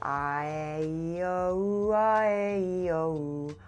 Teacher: Already my voice quality shifted. It's a little softer, a little more resonant, smoother. My jaw feels a lot more open.